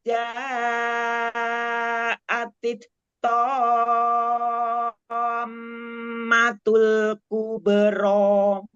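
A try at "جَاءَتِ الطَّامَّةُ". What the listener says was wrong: Diulang, til, ketok, jangan ada hamas. Langsung syiddah. Tito, tito.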